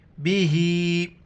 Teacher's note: کڑی زیر ہے، ایک الف کی مقدار نیچے کھینچنا ہے